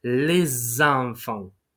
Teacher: this word starts with a vowel, the pronunciation rule is that the s sound becomes a z sound. Les enfants, not les enfants or les enfants, right?